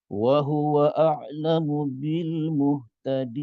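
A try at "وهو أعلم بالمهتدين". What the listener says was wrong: tekan sebenarnya tak perlu pun dia bukanlah kesalahan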